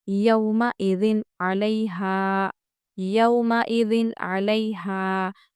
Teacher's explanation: نون کو ظاہر کر کے جلدی پڑھیں گے، یعنی نہ کھینچیں گے نہ رکیں گے، کچھ نہیں کریں گے بلکہ جلدی پڑھیں گے۔ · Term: اظہار